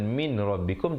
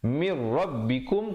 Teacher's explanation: Kemudian nun mati bertemu ra, idgham bila gunnah.